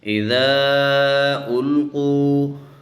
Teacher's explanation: ذال کے آگے الف ہے، الف کے اوپر مد ہے تو ہم اس کو تھوڑا سا کھینچیں گے